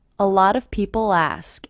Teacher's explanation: there's no punctuation in between a lot of people ask and I do hear that L as really linking to the beginning vowel sound